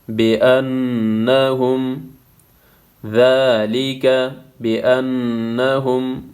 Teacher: نون مشدد ہے، یہاں پہ غنہ ہوگا